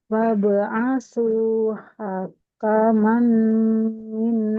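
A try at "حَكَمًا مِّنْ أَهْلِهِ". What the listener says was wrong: Hakamam. Tidak hakaman. Hakamam. kalau ada tanwin bertemu dengan huruf mim, huruf nun, huruf ya atau huruf waw maka melebur di huruf-huruf yang tadi. Hakamam. Jadi tidak hakaman.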